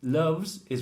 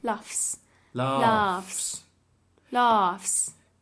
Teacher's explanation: Loves is VZ. Laughs, if we're adding an S, is an FS.